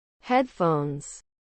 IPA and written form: ˈhɛdˌfoʊnz (Headphones)